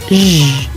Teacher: zh is voiced, meaning you make a sound with the vocal cords.